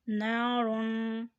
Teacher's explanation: را کو موٹا ادا کریں لیکن یہاں تنوین تو ہے لیکن غنہ نہیں ہوگا اس لیے کہ آگے حامیہ، ہا حرف ہلکی ہے اور جہاں حرف ہلکی آ جائے وہاں پر غنہ نہیں ہوتا۔